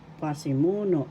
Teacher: The third syllable has the accent